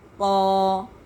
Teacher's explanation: اب ہم پڑھیں گے قا، اس کو جو ہے الف کو موٹا، اس کا جو ساؤنڈ ہے، اس کی جو آواز ہے وہ موٹا پڑھا جائے گا